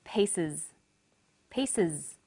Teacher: The S on the end is pronounced z because it followed an S sound.